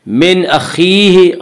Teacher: خا کو پر پڑھیں گے، خا حروف مستعلیہ میں سے ہے، حروف مستعلیہ 7 ہیں جن کا مجموعہ خصہ ضبط نقض ہے جو ہمیشہ ہر حال میں پر پڑے جاتے ہیں۔